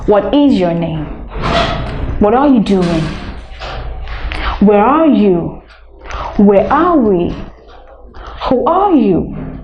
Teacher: WH question you ask them on a falling intonation